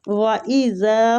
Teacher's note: وَإِذَا وہ پہ ہونٹوں کو گول، زال نرمی والا ہے، کھینچیں گے اس کو، خلا خوا مستعلیہ حروف ہے، پور پڑھیں گے، لام کو الف مد کی وجہ سے کھینچیں گے۔